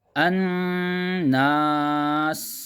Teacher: نون پر تشدید ہے، غنہ کریں گے، ناک سے پڑھیں گے، الناس، اور سین کی آواز میں سیٹی نکالیں گے، الناس، اس طرح۔